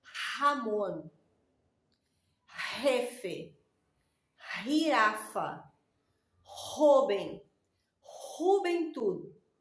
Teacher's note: la J seguida de cualquier vocal, A, E, I, O, U, ella va a tener el sonido de la R, el sonido aquí que sale de la garganta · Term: sonido de la garganta